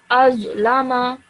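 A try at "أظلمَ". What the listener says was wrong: The rod over here, this is a thick sounding letter. So when you say it with a bit more thickness, okay?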